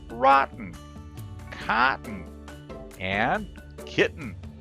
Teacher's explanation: listen for the held T sound in these three sample words where you'll find an unstressed TN sound